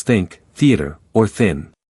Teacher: Now push air out through your mouth without using your vocal cords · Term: TH sound